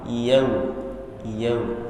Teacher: Ketika sukun pun harus dimonyong supaya vokal u-nya maksimal. Yau. Kalau tidak dimonyongkan maksimal, biasanya bunyinya sudah terdengar beda. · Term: waw sukun